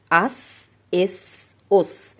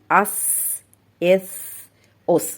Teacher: جب ہم سین کو ساکن کرتے ہیں تو اس کی صفت ہمز واضح ہو کر سامنے آتی ہے، یعنی حرف کے ختم ہونے پر آواز کمزور ہو جاتی ہے اور سانس جاری رہتا ہے